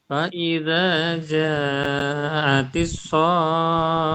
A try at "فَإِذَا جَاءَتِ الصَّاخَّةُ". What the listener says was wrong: Khohnya pendek, masih sering panjang ya akhirnya ya.